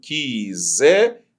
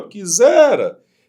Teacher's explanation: A palavra quisera, ela tem sílaba tônica no zé. Se você dividir a palavra, vai ficar assim, ó, quisera, tá vendo?